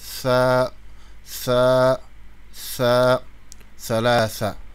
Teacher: C'est une lettre interdentale, c'est-à-dire on la prononce la langue entre les dents.